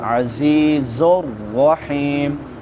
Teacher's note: را موٹی ہوگی کیونکہ اس کے اوپر زبر ہے، فتحہ ہے. رحیم حا ٹھیک ہے وسط حلق سے اور مدہ بھی ہے، حا کے بعد یائے مدہ ہے، یا ساکن ما قبل کسرہ ہے.